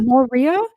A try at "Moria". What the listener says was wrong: Moria. it might be the accent. you're putting emphasis on a weird syllabalism.